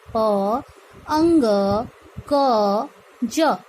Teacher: पंकज शब्द को जब हम उच्चारित रूप में बोलते हैं तो यहाँ पर उच्चारण होता है प अंग क ज।